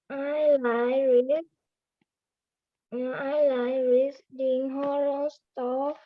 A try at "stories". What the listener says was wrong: Stories, not store. Stories.